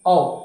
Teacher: औ जब बोल रहे हो तो हल्का सा जबड़ा फैल जा रहा है, इसका मतलब ये अर्ध समृद्ध हो गया, ये अर्ध विपरीत हो गया, है ना।